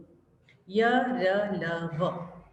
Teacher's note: उच्चारण में श्वास का अवरोध बहुत कम, रुकावट बहुत कम आती है इसमें। जो वायु प्राण वायु बाहर आती है तो उसमें उच्चारण करते समय श्वास का अवरोध बहुत कम होता है, रुकावट बहुत कम होती है। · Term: अंतस्थ व्यंजन